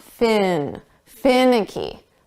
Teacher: Fin, ick, e. Now, we're going to put the syllable stress on the first sound